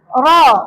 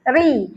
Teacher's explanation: Ra, kalau bagi atas tebal. Ra. Kalau bagi bawah dia nipis.